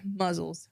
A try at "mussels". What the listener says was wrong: Mussels. You made it sound like Z's.